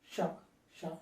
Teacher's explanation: నాలుక చివరి భాగం పైకి మడతపడి ష పుట్టింది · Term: మూర్ధన్యం